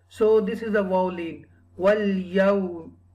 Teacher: When there is a zaba before wao sakina, wao become lean. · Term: wao lean